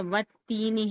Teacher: والتینی میں الف لام دونوں چھوڑ رہے ہیں